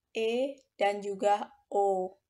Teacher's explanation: dibentuk apabila rahang bawah menjauh sedikit dari rahang atas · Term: vokal madya